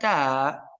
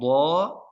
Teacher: jika saya ucapkan ta, pastikan pangkal lidah ke bawah. Jika saya ucapkan do, pastikan pangkal lidah ke atas.